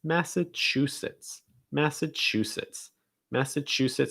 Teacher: you're going to stress the chew that's the syllable distress massachusetts after that we have switzerland switzerland